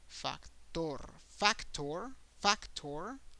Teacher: you have to make an emphasis in the last syllable